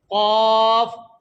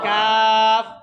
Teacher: قاف کی آواز موٹی اور کاف کی آواز باریک